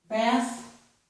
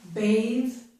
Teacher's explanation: So, with these two now, the TH is now the voiced TH. As a noun, bath, it's voiceless. As a verb, bathe, it's voiced.